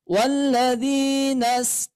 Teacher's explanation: Huruf dad ini keluarnya dari tepi lidah tepi lidah itu samping lidah kita ya boleh yang kanan boleh yang kiri juga boleh dua-duanya ditempelkan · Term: huruf dha